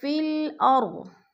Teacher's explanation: اور فی الارض، فا جو ہے، فا کو ہم نے لام کے ساتھ ملا کے پڑھنا ہے، کیونکہ الف خالی ہے